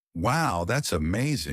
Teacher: Rise then drop shows emotion. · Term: Rising, falling